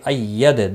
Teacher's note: بینات نون کے اوپر کھڑی زبر ہے، ایک الف کے برابر کھینچ کر پڑھیں گے۔ اید دال ساکن پر قلقلہ ہوگا